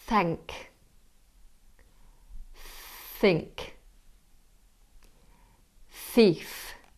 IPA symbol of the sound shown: θ